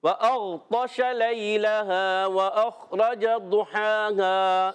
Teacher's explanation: ہا پر کھڑا زبر ہے ہا کو ایک الف کھینچیں گے